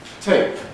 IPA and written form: teɪp (tape)